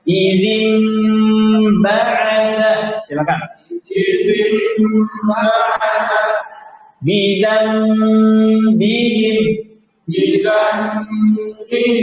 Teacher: Adapun iklab ketika nun sukun bertemu ba bi gunnah dibaca dengan gunnah. Gunnahnya tambahan dilamakan. · Yang pertama rapat, kemudian ditambah gunnah. Gunnahnya lama.